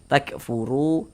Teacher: Sebelum wau sukun ada harakat dhammah, maka huruf yang memiliki harakat dommah ini dibaca panjang sehingganya ru kita baca panjang. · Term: mad tabi'i